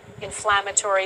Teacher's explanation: when the reporter said inflammatory, the T sounds become like ch sounds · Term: assimilation